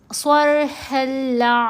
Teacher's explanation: लाम मुशद्दद के ऊपर और रा मुशद्दद के ऊपर गुन्ना नहीं करना